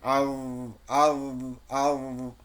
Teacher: একটু কাঁপবে, কম্পন হবে, বাতাসটা, আওয়াজটা জারি থাকবে। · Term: সাকিন